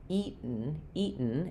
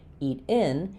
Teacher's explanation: you're not going to hear um any vowel before the N. And this one, eat in.